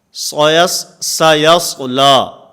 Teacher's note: سین میں آواز کو باریک اور صاد کے اندر آواز کو پر کرنا ہے. سیصلا، لا نہیں لا، اس میں امالہ کی طرف نہیں جانا، جھکاؤ نہیں آنا چاہیے.